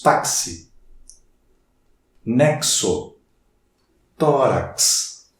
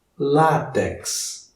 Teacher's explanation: Quando eu escrevo a palavra táxi, visualizando aqui, eu tenho 4 letras. Mas o X me dá 2 sons, um som de K e de S. Portanto, a pronúncia não é de 4 sons, mas de 5.